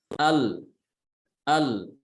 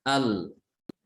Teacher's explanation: Ya, contoh, ketika kita mengucapkan lam sukun ya. Ketika kita mengucapkan huruf lam sukun di situ ada pertemuan antara ujung lidah dengan apa? Dengan langit-langit mulut.